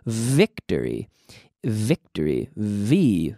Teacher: Es nada más que un F vocalizado